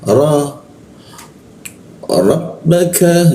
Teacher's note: ketika dibaca huruf ro itu keluarnya o tapi mulutnya itu a